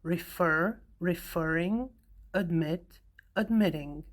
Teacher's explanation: the last syllable is stressed